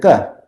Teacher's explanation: if you use the throat and it's hard and unaspirated, you get a ka